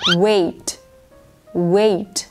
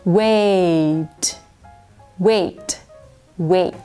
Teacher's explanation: เป็นสระสองเสียงเคลื่อนห่างกันจะยาวกว่านิดหนึ่งนะคะ